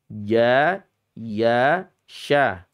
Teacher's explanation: lidahnya huruf jim itu hanya tengah-tengahnya saja yang menyentuh langit-langit mulut